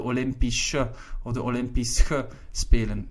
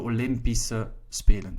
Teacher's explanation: notice that Olympische is pronounced with an S, although you write SCH at the end. Well, if you write SCH at the end, most of the time followed by an E, you will pronounce it as an S.